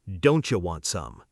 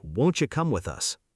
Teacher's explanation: The T and Y sounds blend together into a ch sound. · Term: assimilation